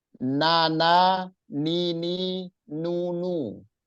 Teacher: ujung lidah kita menyentuh gusi gusi di gigi seri bagian atas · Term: huruf nun